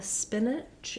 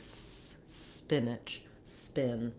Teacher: there's no vowel sound before the S. So what you want to do is just, if that is an issue for you, start by starting on the S sound and hold your S sound.